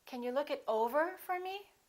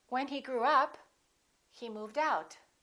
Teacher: if it's a phrasal verb, we stress the second part. We stress the preposition.